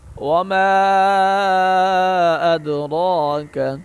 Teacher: دال پر قلقلہ کریں گے، را کو موٹا پڑھیں گے۔